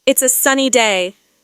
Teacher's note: the intonation stays flat or goes slightly down at the end